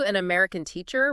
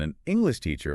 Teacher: an American teacher where teacher is the main point and then an English teacher follows that same pattern stressing teacher